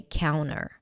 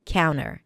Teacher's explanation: When the T appears after an N in unstressed syllables, it is often dropped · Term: drop the T